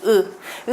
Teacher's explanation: 하는 순간 혀가 뒤로 밀리는 거 느껴지실 거예요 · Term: 후설 모음